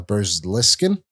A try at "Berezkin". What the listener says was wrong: You put an L in there somewhere.